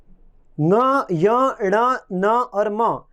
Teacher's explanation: ङ, य, ण, न और म ये मुख और नासिका से बोले जाते हैं